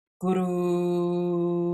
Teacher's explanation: short on the gu, longer on the ru